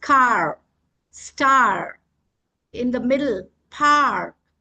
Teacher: The r is more obvious than the vowel. So we call it a bossy r and it takes away the vowel sound. · the vowel sound is gone because the r sound is more pronounced